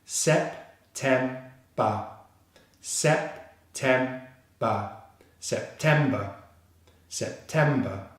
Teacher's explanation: The second syllable, which is the stressed syllable, starts with the /t/ consonant sound